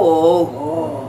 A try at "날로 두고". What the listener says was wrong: 아니요, 음이 안 맞아. 날로 두고 고 고 그렇지. 날로 두고